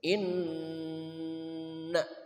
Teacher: Nun musyadadah tajibul gunah bertasyid wajib dibaca dengung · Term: Nun bertasydid